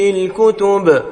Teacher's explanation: اگر للکتب پر وقف کیا جائے تو با ساکن پڑھی جائے گی اور یہاں پر قلقلہ کبرا ہوگا